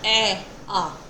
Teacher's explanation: जब उच्चारण करते समय मुंह पूरा खुलता है और ज्यादा विस्तार होता है। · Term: विव्रत